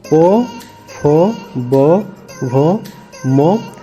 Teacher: ये दोनों ओठ के बीच बिना ओठों के संपर्क किए आप इसे नहीं बोल सकते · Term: ओष्ठ